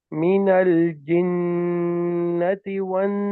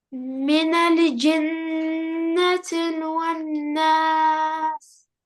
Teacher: heard how I held the gunna in my nose for 2 counts